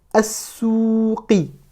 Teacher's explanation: le sin est une lettre solaire, donc on ne va pas prononcer le lam.